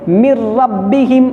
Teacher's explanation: نون ساکن کے بعد حروف یرملون میں سے را ہے، اس لیے نون کا را میں ادغام ہو گیا، ٹھیک ہے۔ من ربہم، لیکن دیکھیں یہاں غنہ نہیں ہو رہا ہے۔